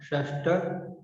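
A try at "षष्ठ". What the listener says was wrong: shashta. Shta. Not shashta. You don't pronounce sha fully. You just pronounce it half. Shta. Shta.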